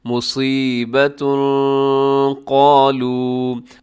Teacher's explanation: اصابتہم مصیبت قالوا، مصیبتن میں صاد موٹا رکھیے گا، اور آخر میں تنوین ہے، مصیبتن کے آخر میں تنوین کے بعد قالو کے شروع میں قاف ہے، تو قاف حروف اخفا میں شامل ہے، آپ یہاں پہ اخفا کیجیے گا